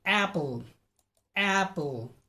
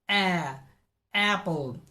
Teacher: the tongue is in the front of the mouth it has a forward shift of forward movement